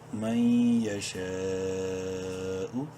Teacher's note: شین الف مد زبر شا، 5 الف کے برابر لمبا کریں گے شین کو مد کی وجہ سے. حمزہ پیش او، من یشاء.